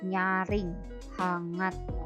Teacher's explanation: ada fonem N, diucapkannya bisa en, bisa juga eng di situ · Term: bunyi en dan bunyi eng